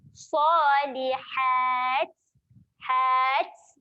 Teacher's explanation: Okey, bila kita nak berhenti dekat sini, automatik ta ni dia menjadi ta mati lah. Bila ta mati, sifat dia kena keluarkan angin. Jadi keluarkan sikit angin waktu nak matikan kat sini.